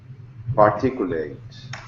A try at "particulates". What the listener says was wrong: But it's not late. It's lits. Particulates.